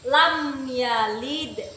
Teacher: hukum bacaan izhar syafawi, karena ada huruf mim sukun bertemu dengan ya. Cara membacanya itu jelas